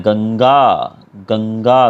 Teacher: तो यहाँ पर हमारा जो स्वर है, न का स्वर है, वो हमारी नाक से निकलता है। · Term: अनुस्वार